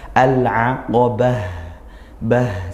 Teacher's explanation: di akhir tak marbutah kita waqafkan maka bunyi huruf ha, al-aqabah, bah seperti itu ya, ha sukun.